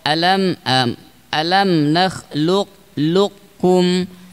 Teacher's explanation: Tapi kalau kita berpedoman dengan manhaj Imam Asy-Syatibi, maka beliau menguatkan dengan cara yang idgham kamil. Kalau idgham yang nakis, maka tersisa sifat isti'la pada qaf.